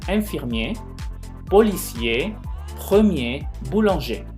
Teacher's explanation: Si se fijan, en ninguna de ellas yo pronuncié la R.